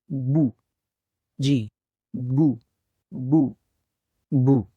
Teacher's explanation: होठों के अंदर वाले हिस्सों को आपस में मिलाएंगे तो हर्फ ब की आवाज बू अदा होगी